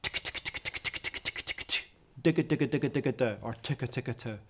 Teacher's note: So what trumpet players have developed is double and triple tonguing. So the T sound or the D sound from the tongue, and then a G sound in the throat. And each of these sounds causes the air to stop and then be released, giving you a nice clean start. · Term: double tonguing